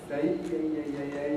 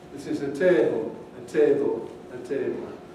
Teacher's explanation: in the north of england and in various other places you can get a monophthong instead of the diphthong